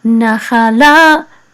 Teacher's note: this etnachta is the accent mark, so the accent is on the last syllable, but this syllable is a little bit stronger than this one, so this nachala, okay, nachala, and this etnachta says etnachta, sorry, etnachta.